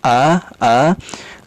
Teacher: Kalau ya hamzah ya, itu letaknya di al-halqu, tenggorokan yang paling bawah, sehingga dia paling dalam a.